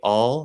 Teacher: if we follow the basic rules we see all would use the half l dark l